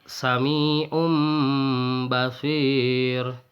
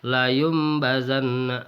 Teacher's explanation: iqlab Hai iqlab menurut bahasa adalah menukarkan atau mengganti maksudnya adalah merubah bunyi nun mati atau tanwin menjadi huruf mim mati apabila disambut dengan huruf ba